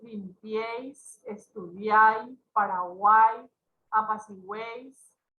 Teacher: Acentuación de las palabras con tríptono. Acá ya hay una secuencia de 3 vocales y se pronuncia en una sola emisión de voz. Forman una sola sílaba.